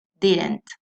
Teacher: Al pronunciar didn't, la lengua no sale de entre los labios, sino que la mantenemos detrás de los dientes.